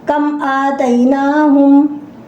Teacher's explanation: I am not doing any gunna, no ikhfa. Clear sound after mim sakin. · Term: Izhar Shafi